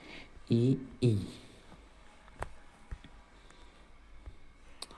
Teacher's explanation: तालव्य स्वर, जो तालू से निकलने वाले स्वर हैं